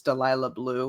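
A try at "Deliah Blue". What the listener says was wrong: There's no extra L there.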